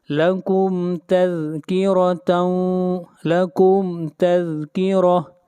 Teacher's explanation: میم کو ظاہر کر کے پڑھیں گے، اظہار شفوی ہوگا